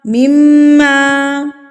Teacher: میم مشدد پر غنہ کیا جاتا ہے، یعنی کہ ناک میں آواز کو لے کے جانا ہے. ایک حرکت کے برابر آپ نے اس کو ناک میں میم کی آواز کو روک کے رکھنا ہے.